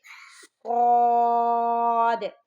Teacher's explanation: اچھا، اس کو سواد نہیں پڑھنا آپ نے، ٹھیک ہے۔ صاد کو پڑھتے ہوئے واو کی آواز نہیں آنی چاہیے